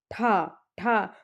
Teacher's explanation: उच्चारण स्थान जानने का सबसे आसान तरीका है आप बोलिए ठा ठा। तो हमारी जो टंग है वो मूर्धन्य से टच होती है। तो ठा का हमारा उच्चारण स्थान है मूर्धन्य।